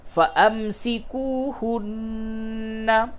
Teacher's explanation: نون مشدد ہے، غنہ کیجئے